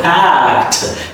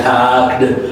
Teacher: So you put the final D as a T sound in your communication. The reason why because the word is ending on the C sound and the C is unusual consonant letter. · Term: soft T